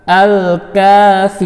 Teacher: Lam ta'rif bertemu dengan kaf yang merupakan salah satu dari qamariyah, maka lam ta'rif dibaca jelas atau izhar.